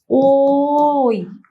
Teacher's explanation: আমরা যখন ওই উচ্চারণ করব ওই, তখন আমাদের আসে ওই, ও প্লাস ই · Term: কণ্ঠ তালব্য ধ্বনি